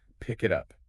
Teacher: The K sound at the end of pick jumps over to the I in it. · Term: link